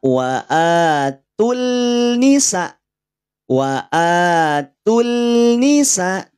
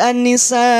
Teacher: secara kaidah alif lam syamsiyah itu bunyi lamnya tidak perlu dimunculkan